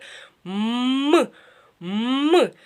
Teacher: при вимові цього звуку струмінь повітря виходячи зустрічає перешкоду у вигляді нашої губок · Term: звук м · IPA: [м]